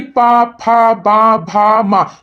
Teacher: ओठे आपस में टकरा रही हैं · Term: ओष्ठ